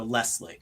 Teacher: I pronounce it with an S more than a Z